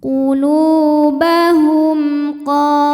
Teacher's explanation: Qo dihukumi dengan mad thobi'i muqaddar. Karena huruf qof berbaris fathah panjang, maka kita panjangkan qof-nya ini dua harakat.